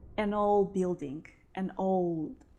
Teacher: it seems that i don't pronounce d